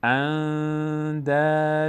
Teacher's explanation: یا کلمه نون وقتی بعدش دال بیاد، اندادن، نون از بینی ادا میشه، اندادن، مقداری هم روش توقف میکنیم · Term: اخفا